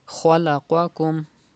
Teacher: You have to pronounce kha and qaf with thicker voice because they are from mustaliya letters